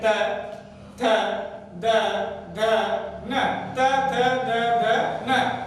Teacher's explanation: ऐसे जिह्वा दांतों को स्पर्श कर रही है, जिह्वा दांतों को स्पर्श कर रही है और आगे से नहीं पीछे से धक्का मार रही है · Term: दंतीय वर्ण